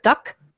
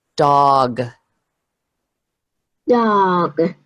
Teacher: make the O nice and long and a G at the end and not a K. So instead of duck, dog.